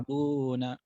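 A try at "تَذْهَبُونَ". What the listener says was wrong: Lidahnya nggak boleh taz, tapi agak dikeluarkan dikit lidahnya. Nggak boleh sampai gitu. Nanti itu sa. Ujung lidahnya diketemukan dengan gigi atas.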